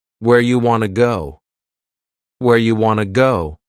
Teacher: You becomes ya and want to becomes wanna. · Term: reduction